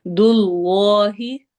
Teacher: اس میں جلالہ کے لام کو موٹا ہیوی کر کے پڑھنا ہے، کیونکہ اس سے پہلے والے لفظ کے اینڈ پر ضمہ پیش آ رہی ہے۔